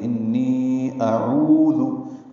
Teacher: انی میں نون مشدد پہ غنہ کریں گے